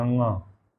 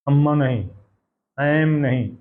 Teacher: अनुस्वार आता है, तो वो अंगा पढ़ा जाएगा, अंगा। अम्मा नहीं, ऐम नहीं, ऐंग, ऐंग, ऐम नहीं।